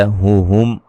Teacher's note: میم ساکن کا اظہار ہے، غنہ نہیں کریں گے